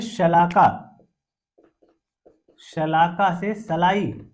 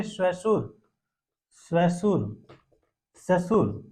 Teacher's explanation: जो तालव्य ध्वनि श है वो दंत्य श में परिवर्तित हो जा रही है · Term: ध्वनि परिवर्तन